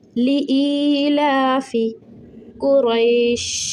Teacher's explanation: حمزہ یا زیر ای 3 سیکنڈ کے لیے کھینچیں گے، لام کھڑا زبر ہے 1 سیکنڈ کے لیے